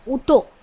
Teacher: અને શરૂઆતના સ્થાનમાં એનો લોપ જોવા મળે છે જેમ કે હતોમાં હ શરૂઆતમાં છે આદિ સ્થાનમાં છે તો એ એનો લોપ થઈ જાય છે